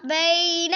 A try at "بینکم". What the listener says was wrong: ایک بی نا. اونچا پڑھو نا. لمبا نہیں کرنا. بی یہ یا مدہ نہیں ہے. بینکم.